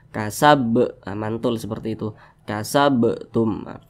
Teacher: Salah satunya huruf ba. Apabila dia sukun berarti dipantulkan. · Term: qalqalah sughra